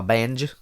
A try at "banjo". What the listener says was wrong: You saved one syllable. You saved literally one letter. Banj.